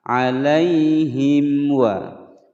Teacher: mim sukun bertemu dengan wawu, hukum bacaan idhar syafawi, dibaca jelas, tidak boleh didengungkan, tidak boleh dipantulkan